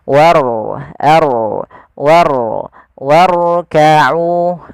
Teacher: Pada lafal warkau di sini ada huruf ro yang ditandai dengan warna biru tebal melainkan huruf rnya dibaca dengan ro tafkhim yaitu ro yang tebal · Warka'u itu ro-nya tipis, tapi diangkat ujung lidahnya untuk menebalkannya.